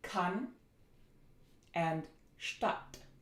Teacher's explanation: Next, we're going to look at the short a. This is a short, low, central, unrounded, lax vowel.